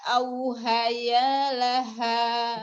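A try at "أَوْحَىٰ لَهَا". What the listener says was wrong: Ini Al-Qur'annya Al-Qur'an Utsmani. Jadi ini bukan ha ya, tapi auha. Ha, jadi panjangin aja. Bukan ya. Ya, bukan ya.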